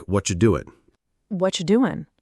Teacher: And you often becomes a soft ya sound. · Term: reduced